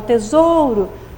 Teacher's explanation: quando eu falo tesouro, olha lá, o zou aqui é a tônica